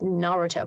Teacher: this emphasis is on the first syllable instead of the middle one which is what we're used to so that got um that